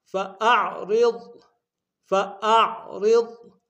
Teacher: را کو ضاد کے سامنے لائیں گے، ضاد کو موٹا ادا کریں گے